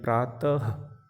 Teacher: विसर्ग, प्रातः। इसमें ह की आवाज़ आ रही है